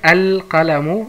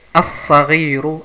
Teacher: Und bevor ich die andere Beispiel schreibe, das Beispiel schreibe, also Qaf ist ein Mundbuchstabe, deswegen hat man hier keine Shadda und die Lam wird ausgesprochen. Saad ist eine Sonnenbuchstabe und deswegen hat man hier eine Shadda, Verdopplungszeichen, und diese Lam wird nicht ausgesprochen